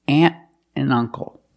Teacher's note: you hear the word and pronounced NN aunt and uncle